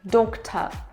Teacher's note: Cuz if I open the mouth then, I can see my side teeth. Yes, so the tongue is really flat and low. But, don't lower it a lot. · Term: shwa